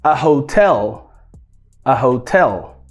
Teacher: a gente não vai colocar a tonicidade, a força na primeira sílaba, é na segunda.